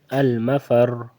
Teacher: اس سے پہلے زبر ہے، وقفر کی بات کر رہا ہوں، وقفن میں اس سے پہلے زبر ہے تو تب بھی یہ را پر رہے گا۔ ٹھیک ہے، دونوں صورتوں میں یہ را پر پڑھنا ہے، موٹا پڑھنا ہے